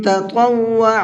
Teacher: شروع میں تا ہے جس کو نارملی پڑھا جاتا ہے، اور اس کے بعد میں طا ہے جس کو منہ بھر کے پڑھا جاتا ہے